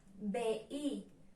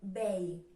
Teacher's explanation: Mireu, a vegades tenim paraules en què la segona vocal és la I i la U, però a l'hora de pronunciar-les, les pronunciem en síl·labes diferents. Per tant, aquest diftong es trenca. · Si estigueren juntes les vocals, si fora un diftong, pronunciaríem vei, però diem veí.